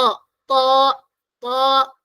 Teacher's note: സുക്കൂൻ കൊടുത്ത് ശദ് കൊടുക്കുന്ന രീതിയിൽ ആ രീതിയിൽ ഉച്ചരിക്കുകയാണ് അതാ ത്വാ ത്വാ നാവിന്റെ അറ്റം എവിടെ ടച്ച് ചെയ്യണം മുകളിലെ മുന്നിലെ പല്ല് തുടങ്ങുന്ന സ്ഥലത്ത് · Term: ഹെവി ലെറ്റർ